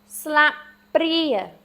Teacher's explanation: Your pri is your accented syllable. Slap pri. So sla, this has your ah sound in it.